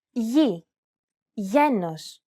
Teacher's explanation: This letter is tricky because the pronunciation changes depending on the surrounding vowels. When it precedes an I or an E vowel, it's pronounced very much like an English Y sound.